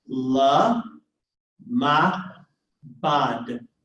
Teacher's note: क्योंकि इसके सामने जो है एक शॉर्ट वाउल मौजूद है. So in one word we have a vocal schwa and a silent schwa.